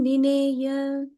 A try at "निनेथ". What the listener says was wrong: निनेथ. Okay, and the second tha, ninetha.